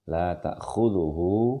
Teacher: Oleh karena itu ini menandakan bahwa hu-nya di sini dibaca dengan 2 harakat panjang